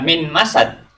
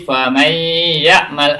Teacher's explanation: suara nun sukun atau tanwin itu dilebur masuk ke dalam huruf sesudahnya dengan didengungkan dan ditahan 2 harokat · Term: idgham bi gunnah